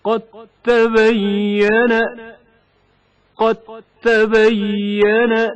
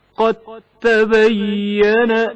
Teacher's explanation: مثلا دال ساکن کا تائے متحرک میں ادغام ہونا. قد تبين دال ساکن کی آواز واضح طور پر سنائی نہیں دیتی، اس کے بدلے تا کی آواز تشدید کے ساتھ ادا ہوتی ہے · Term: ادغام متجانسین